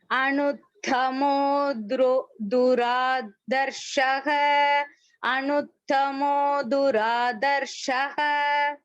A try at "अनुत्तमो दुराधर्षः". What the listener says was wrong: दुराधर्षः அந்த த அழுத்தணும் भगिनी.